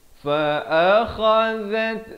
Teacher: zal di hujung lidah, bertemu ta, ada bunyi hamasnya